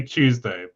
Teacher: I combine the consonants with yod in like I say Tuesday, but I don't pronounce tin as chin.